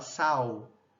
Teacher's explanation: O primeiro é a vocalização, que em vez que essa lateral ela se transforma em uma semivogal.